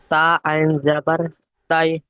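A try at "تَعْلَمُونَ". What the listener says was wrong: হয়নি তাই বলছেন, শোনেন আপনি বলছেন তা আইন জাবার তাই, তাই নয়, তা আইন জাবার তা, তা।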